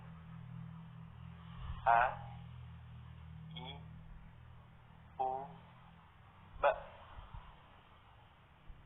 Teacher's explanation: Huruf A dikeluarkan pada tenggorokan yang terjauh.